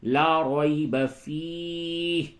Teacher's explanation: یا ساکن سے قبل زبر ہے، یہ یا لین ہے، نرمی کے ساتھ بولیں گے